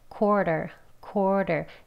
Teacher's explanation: 원어민들도 quarter 이렇게 두 번을 이렇게 발음하기보다는요. 앞소리를 조금 이 R에 해당하는 소리를 약하게 해요. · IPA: /ˈkwɔːr.tər/